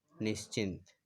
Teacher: विसर्ग के बाद अगर छ है तो विसर्ग का परिवर्तन तालव्य स में हो गया